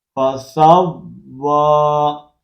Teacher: کھڑی زبر، اس کو ایک الف کی مقدار کے اندر کھینچ کر پڑھیں گے